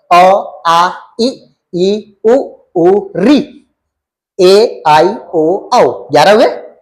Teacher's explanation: जितने भी मैंने अभी तक स्वर बोले वो सब के सब निरनुनासिक है